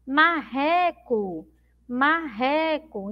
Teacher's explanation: Termina com O, mas tem som de U.